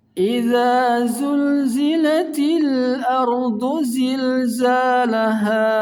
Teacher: dibaca panjang 2 harakat karena termasuk mad tabi'i